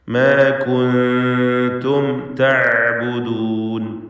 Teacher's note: അന്ത്യത്തിൽ വന്ന സാക്കിനത്തായ മീമിനെ ഇൽഹാർ ഷഫവി നൽകി മണിക്കാതെ വെളിവാക്കണം.